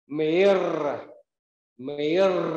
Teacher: âm r cuối, anh chị rung lưỡi khi kết thúc âm thanh, chúng ta rung lưỡi.